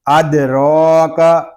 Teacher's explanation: دال ساکن ہے، اس کو کلکلے کے ساتھ پڑھیں گے